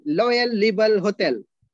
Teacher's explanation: in Thailand, they don't have ra sound, ra.